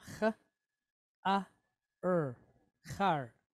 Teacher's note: Short duration A type vowel with a resh behind it. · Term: Patach